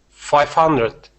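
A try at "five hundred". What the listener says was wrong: So I want to hear the R sound, not 500, not 500, but 500. Just making sure that your R's are not being rolled.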